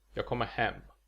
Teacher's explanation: Now, in this sentence, the words on their own would all have accent 1, but because of the sentence prosody, only the last word is stressed, and thus only the last word is actually pronounced with accent 1. The first two words are just kind of rushed through.